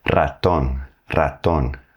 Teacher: Which one you choose is going to depend on where it is in the word. When the R is at the beginning of the word, you're going to have to hit that trill.